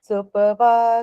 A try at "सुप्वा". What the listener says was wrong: सुपवा में गलत हुआ बाकी सारा ठीक है य सुपवा नहीं सुपवा आधा